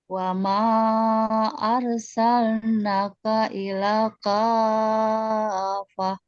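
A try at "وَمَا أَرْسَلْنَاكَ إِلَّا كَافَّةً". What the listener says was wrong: Nah, kafahnya udah bagus. Arsalna di ayun, illa juga di ayun, 2 harokat. illa, jangan buru-buru fokus ke kafahnya. Naknya juga sama illa 2 harokat di ayun. Panjang Bu 2 harokat.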